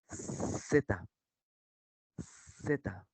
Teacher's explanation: la lengua se coloca entre los dientes incisivos superiores e inferiores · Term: Zeta